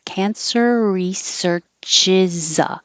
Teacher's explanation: So ends with an R, begins with the R, just make one R.